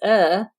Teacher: all they're doing is uh and they're not rounding their lips at all